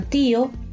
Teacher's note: En la palabra tío, la I se pronuncia con fuerza junto a la O.